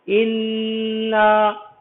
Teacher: دیکھیے پہلے ہم نے آپ کو بتایا تھا یہ نون ہے، اس نون کے اوپر تشدید لگی ہوئی ہے، اور یہ قاعدہ بتایا گیا ہے کہ جس نون پر تشدید لگی ہوتی ہے اس نون پر دیر لگاتے ہیں، دیر لگا کر کے پڑھتے ہیں